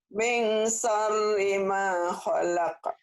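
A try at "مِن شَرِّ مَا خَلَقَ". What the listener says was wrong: Tinggal shin-nya digedein. Min shin.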